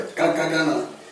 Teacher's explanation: तो ट ठ जो आप बोल रहे हैं, तो आपका जो जीभ है वो आपके मूर्धन्य से लग रहा है, इसे इसलिए मूर्धन्य कहते हैं।